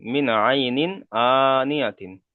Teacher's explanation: নুন আইন নুন এসছে, সাকিনের পরে হুরুফে হালকের আইন 6টি অক্ষরের মধ্যে থেকে আইন এসেছে, তাই নুন সাকিনের আওয়াজকে বিনা গণ্যায় জাহির করে তাড়াতাড়ি পড়তে হবে। এখানে গণ্যা বিনা হবে না।